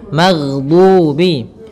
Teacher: huruf ghain tidak boleh mantul, tetapi dia memiliki sifat yaitu mengalir suaranya